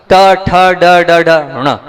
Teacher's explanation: जीभ पीछे मोड़कर आपको ले जाना है, वहीं से ऋणा का उच्चारण होगा।